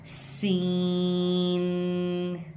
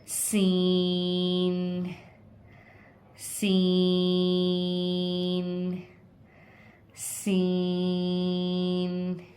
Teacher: सीन के लिए same वही तरीका इस्तेमाल होगा जो हमने ज़ा के लिए किया है। सीन को हम थोड़ा सा बारीक पढ़ेंगे, खींच के पढ़ेंगे। अपनी ज़बान की नोक को नीचे वाले दांतों की जड़ पे टच करेंगे और सीटी की आवाज़ निकालेंगे।